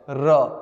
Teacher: पूरे व्यंजनों में एकमात्र र ऐसा है जिसको हम लोग एक बार में नहीं बोल सकते, बोलेंगे तो जीभ कांप जाएगा, इसलिए इसको कहते हैं लुंठित या प्रकंपित। · र आप एक बार बोल ही नहीं सकते, र कई बार बोला जाएगा। बोल के देखिए, स्प्रिंग की तरह जीभ कांप जाएगी।